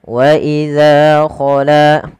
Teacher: Panjangkan huruf za dan la kedua-duanya sama karena ia mad thobi'i